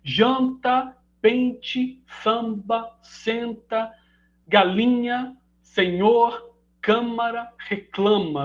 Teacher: grau de nasalização por meio da assimilação